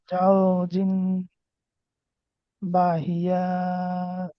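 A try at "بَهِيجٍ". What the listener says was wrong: বাহিয়া বলে কেন? বাহিজিন। যাও জিম। হুম জাউজিম, এখানে গুণনা হবে, এখানে এক আলিফ টান, জাউজিম বাহিজিন।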